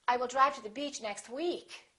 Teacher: if you really want to emphasize that you're saying week you can put a little extra stress on the word week